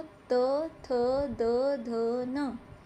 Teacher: दंतव्य होते हैं जिनको बोलते टाइम जीभ दांतों से टकराती है।